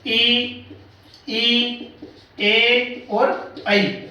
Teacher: ठीक है, तो वो 4 ई, ए और आई, इनको उच्चारण करने में हमारा जीभ का जो आगे का हिस्सा है वो आगे की तरफ आता है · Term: अग्र स्वर